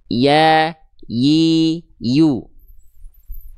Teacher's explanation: Jadi enggak ditempelin, enggak disentuhkan ya. Diangkat dan diarahkan pada bagian langit-langit dan tidak ada udara yang menyebar dari dalam mulut. · huruf ya keluar dari tengah lidah. Dalam istilah tajwid namanya wastul lisan · Jadi tengah lidahnya diangkat mengarah ke langit-langit di atas